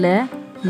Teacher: जिसके उच्चारण में हवा जीभ के पार्श्व मतलब बगल से निकल कर जाए, तो इसे पार्श्विक कहते हैं।